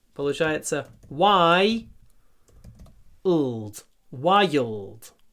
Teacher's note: Здесь у нас есть звук «й» перед «л».